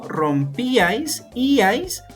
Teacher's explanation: la mayor fuerza de voz, como podemos notar, está en una vocal cerrada. Y la regla de los triptongos es que siempre, siempre, siempre la vocal abierta va a tener la mayor fuerza de voz. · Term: hiato